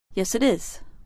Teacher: when Americans answer a yes-or-no question with yes we sometimes say the words with no break the sounds blend together